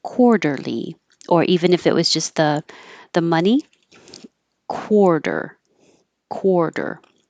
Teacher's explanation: making a k and my lips are rounded core core quarterly the T changes to a d